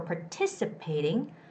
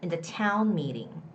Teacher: The stress goes on the second syllable.